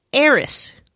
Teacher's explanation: So when they were originally trying to spell out Aerith/Earth in their alphabet, they went with erisu. When said quickly, you drop the U at the end and pronounce it eris.